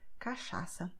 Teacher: If you see CH, the sound is like sh in English when you say show